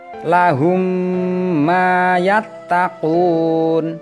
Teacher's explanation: memasukkan suara mim sukun ke dalam huruf mim berharokat berikutnya dan dibaca hunnah atau dengung secara sempurna atau dikeluarkan dari pangkal hidung selama satu atau satu setengah alif atau dua harokat atau dua ketukan. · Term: idhom mimi